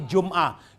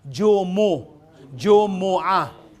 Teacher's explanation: Actually, hindi sukon yung mim. Kailangan Jumu.